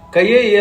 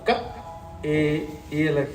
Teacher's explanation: అనే శబ్దం ఇక్కడి నుంచి పలకాలి కయే లక్షణం అని చదివారంటే ఫలితం పోతుంది క తర్వాత ఆపి ఏ అనాలి కంఠంతో పలకాలి